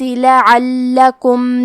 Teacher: حرف اللام کو 2 حرف کے برابر پڑھیں گے کیونکہ اس پہ تشدید ہے